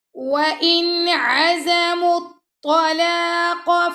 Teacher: نون ساکن بعد یہاں پہ آ گیا عین، تو یہاں پہ کریں گے اظہار